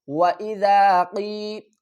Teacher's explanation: یا زیر قی، وَإِذَا قی، قاف کو ہم پر پڑھیں گے، یا ساکن سے پہلے زیر ہے، حروف مدہ بن گیا، اس کو ہم ایک الف کی مقدار کھینچ کر پڑھیں گے